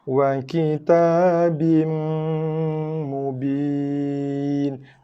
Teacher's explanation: Baru tekan pada mim berserta dengan dengung. 2 harakat ataupun lebih.